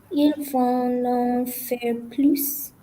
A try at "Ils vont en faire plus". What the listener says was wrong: Why did you say vont non? Vont en, okay. Ils vont en faire plus.